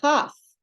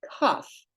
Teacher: Okay, the chaf Without a dageysh, it's a soft ch. But with the dageysh, it's a kaf with the hard K sound.